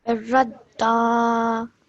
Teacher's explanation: the ra joins onto the dal because it has a shadda on it. So do so with force.